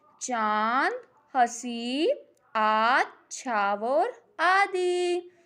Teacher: अब अनुनासिक देखते हैं। इसके उच्चारण में वायु नाक और मुख से एक समय बाहर निकलती है।